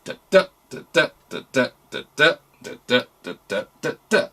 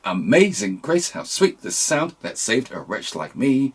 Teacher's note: In other words, there are 4 groups of syllables followed by 3 groups of syllables, and it's unstressed followed by stress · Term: iambic tetrameter